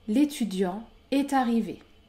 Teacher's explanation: je ne fais pas de liaison après étudiant